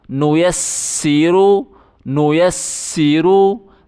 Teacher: یا کو سین کے ساتھ ملائیں، سیٹی کی آواز نکالیں۔ یا سین زبر یس، سین زیر سی، یا سین زبر یس، سین زیر سی، نو یسی نو یسی۔